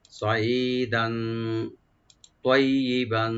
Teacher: আইনটাকে right দিবেন। দান, এখানে দাল উপর যে তানভিন আছে, এখানে আমরা একফা করব, লাইট গুন্না